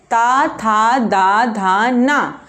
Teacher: दंत मतलब जैसे बोल के आप देखोगे, ता, था, दा, धा, ना। दंत से बोल रहे हैं, मतलब जीभ आपकी कहाँ पे लड़ रही है? दांतों से।